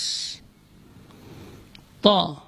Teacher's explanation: ta, ujung lidah berada di usul thanaya, di pangkal gigi seri atas.